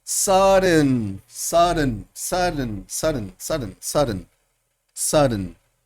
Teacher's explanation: la nasal plosión se cierra y libera el sonido oclusivo por la nariz